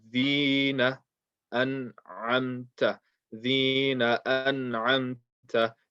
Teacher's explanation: So you don't want to stretch the noon.